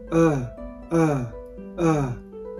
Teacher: めなければ、イーイーイーという母音になって、イーとウーの中間になるわけですね。で、まあ、この辺はまあできなくてもいいかなっていう感じですが、これはね、英語の辞書に載ってる発音記号でも出てきますが、これはね、この四角形の中心にいるわけですよね。 要するに、前寄りでもなく、後ろ寄りでもなく、広くもなく狭くもない。 っていう母音です。曖昧母音なんていう風に呼ばれたりもして、まあ、その発音あるいはこの記号にはシュワーという名前がついてますね。これはアーアーアーという発音です。日本語のアーアーは、まあ、この辺の広めの発音なので、それよりも少し狭い、このね口蓋と舌との間隔が狭いという特徴を持っ